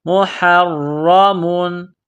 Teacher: را کے اوپر تشدید ہے، را کو موٹا کرنا ہے، را میں سختی کرنی ہے